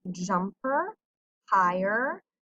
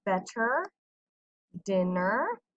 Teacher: this er at the end is where you have a r control vowel where you don't hear the e sound you just hear er